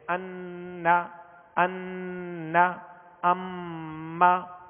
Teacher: اب جیسے ہم نے غنے سے متعلق سنا کہ غنہ کیسے کرنا ہے، کہ ناک میں آواز لے جا کر ایک الف کی مقدار اسے ٹھہرائیں گے